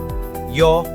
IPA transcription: jə